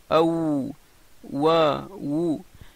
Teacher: Le Waou sort Mina Shafatain, des lèvres, et باستدارة الشفتين أو بانضمام الشفتين وارتفاعها et aussi le fait qu'il s'avance vers l'avant.